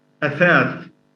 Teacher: most Arabic dialects don't have the tha, so they replace it by either ta or sa